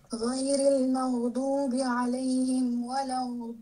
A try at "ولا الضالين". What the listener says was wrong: Your pronunciation of the dad is incorrect. You're pronouncing it, you kind of mixing ghain with dad. You're saying walad, no, it's dad, no ghain. Walad, don't say walad. You put in a ghain in between the lam and the dad, which is not right.